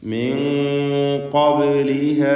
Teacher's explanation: ബാഇൻ്റെ സുക്കൂൻ ഖൽഖല സുഗ്റ നൽകി ശബ്ദം ഹറക്കത്ത് പോലെ ചലിപ്പിക്കണം.